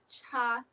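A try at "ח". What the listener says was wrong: So the same part that we were working on with the brother, it's going to be more of a hard H. Ha. Like the word yuck. At the end of it, yeah.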